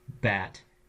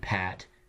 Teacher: if you notice in this case the change is very small between a B and a P by now you know those as bilabial stops the voiced and the unvoiced is just voicing that bilabial stop enough to change words it